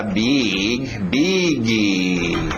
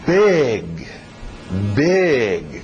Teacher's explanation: Vamos com o I aberto, som de E.